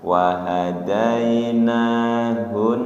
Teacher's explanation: Hun tasdid tekan tahan. Wahadainahun. Hun ditekan dan ditahan.